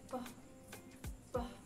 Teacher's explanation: dilafalkan dengan cara bibir atas dan bibir bawah ditetapkan secara tegang untuk menghambat udara